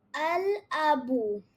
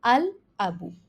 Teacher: here we are pronouncing the lam because it's a moon letter